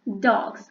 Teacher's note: Now you can see that the same morpheme s is now pronounced as z